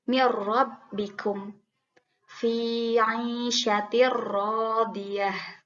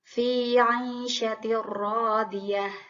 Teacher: Lalu pada huruf ro, mir rabbikum fi 'aisyatir radiyah. Jadi kasroh tainnya dimasukkan ke ro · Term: idgham